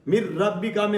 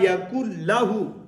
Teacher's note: را میں غنہ نہیں کریں گے اور لام میں بھی غنہ نہیں کریں گے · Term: ادغام